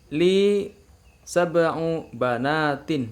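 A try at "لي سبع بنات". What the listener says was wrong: Iya, bagus ya.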